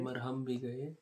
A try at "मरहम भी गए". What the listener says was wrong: जल्दी जल्दी बोलना है, ऐसे नहीं रुक रुक के बोलना है। मरहम भी गए, मरहम के लिए मरहम ना मिला, दम हम दम से गए, दम दम के लिए हम दम ना मिला।